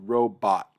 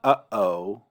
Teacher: that pause that you hear, that's your glottis closing the airway to prevent air from coming through. And so that's actually what the ayin and the aleph are marking, is that glottal stop.